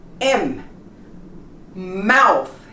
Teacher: my lips, they both touch when I pronounce the M